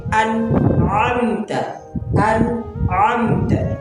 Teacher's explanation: ये हमजा भी गले से अदा हो रहा है। गले के उस से जो सीने की जानिब है।